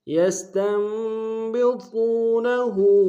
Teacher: سین کی سیٹی باریک ہوگی، تا کو نون کے سامنے آئیں گے، نون ساکن یہاں پہ جو چھوٹا سا میم ہے اس کے سامنے آئیں گے۔